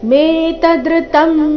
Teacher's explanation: ಇಲ್ಲಿ ತ ಮೇಲೆ ಆಘಾತ ಕೊಡಬಾರದು